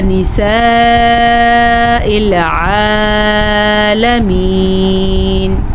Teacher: مد کو خوب کھینچ کے پڑھنا ہے، 5 سیکنڈ تک کھینچنا ہے، یہ بڑی مد ہے